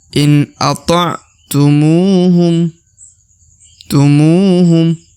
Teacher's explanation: Huruf mu dibaca 2 harokat ya. Karena di depan huruf mu terdapat waw sukun ya, atau waw mati.